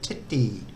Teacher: The first T is aspirated and the second one isn't.